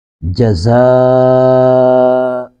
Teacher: زا کو سختی سے ادا کریں گے اور زا پر مد تین الف کھینچیں گے